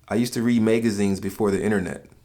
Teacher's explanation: Another attribute of the accent is the long A with words with an AG